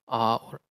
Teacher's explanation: the lowest vowel are and this ah has the tongue position lowest in the mouth